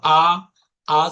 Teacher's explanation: আ যখন আমরা জোরে বলি তাহলে জিবা একদম নিচে নামে। · যখন আপনি আ বলছেন, জোর করে বলেন তো আ, আ যখন বলছেন তখন দেখেন আপনার হচ্ছে যে জিহ্বাটা একদম নিচের তালুর সাথে লেগে একাকার হয়ে যাচ্ছে, এবং জিহ্বা যে আছে এটার কোনো সক্রিয়তা বোঝা যাচ্ছে না। আ যখন আমরা জোরে বলি তাহলে জিহ্বার একদম নিচেই নামে, যার কারণে এই আ কে আমরা বলবো হচ্ছে কি স্বর, নিম্ন স্বর